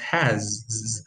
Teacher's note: Individually, if you open a dictionary, you will see that this is pronounced has with a voiced alveolar sound here. But if you put it together, you end up with has to with a schwa here.